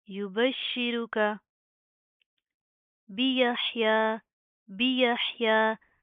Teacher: حا کی آواز کو آپ نے پراپر واضح کرنا، حلق سے ادا ہوگا